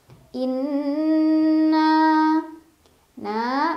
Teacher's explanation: Cara bacanya didengungkan, ditahan kurang lebih 2 harokat. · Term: gunnah musyaddadah